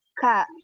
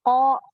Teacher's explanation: kalau huruf kaf itu memiliki sifat hamas. Kalau qaf tidak memiliki sifat hamas.